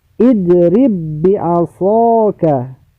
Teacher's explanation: Jadi ba yang pertama itu ba yang sukun, ba yang mati. Ketika kita membacanya maka ba itu dibuang. Ba yang sukun, ya, dibuang. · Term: idgham mutamatsinain